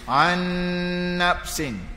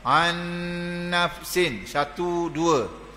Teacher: Jadi an nafsin, biar cukup dua harakat dengung. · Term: idgham ma'al gunnah